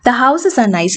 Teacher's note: ഇത് declarative sentence ആണ്. therefore അതിനൊരു falling tone ആയിരിക്കും.